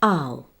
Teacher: smoothly transition to the uh sound by rounding your lips and lifting the back of your tongue to a hump at the back